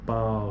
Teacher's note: esse a fica bem forte é o pico da sílaba é é a vogal e depois disso vem o u que